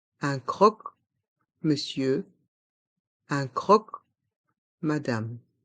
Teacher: Dans monsieur, le O et le N se prononcent E et le R à la fin de monsieur est muet. Dans madame, le M reste en suspens, madame.